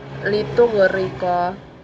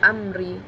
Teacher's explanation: Contohnya yang saya temukan dalam ayat ini yaitu litughriqa, karena ra bertanda baca kasrah, maka dibaca tipis. Kedua, amri, karena ra bertanda baca kasrah, maka dibaca tipis juga. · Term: tarkik ra